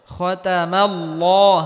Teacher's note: زبر تا خطا মিম লাম জবর মাল খতামাল লাম খারাজুল্লাহ খতামাল্লাহ আল্লাহ শব্দের পূর্বে যদি জবর বা পেশ হয় তাহলে আল্লাহ শব্দকে মোটা করে পড়তে হয়